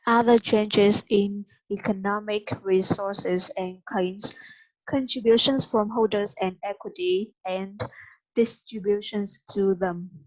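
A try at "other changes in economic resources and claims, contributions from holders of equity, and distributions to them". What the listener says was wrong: Okay, okay. You read very well. It's just that next time you must notice this one.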